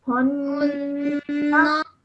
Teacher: So join the two, holding the nasal sound in your nose for 2 seconds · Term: noon gunna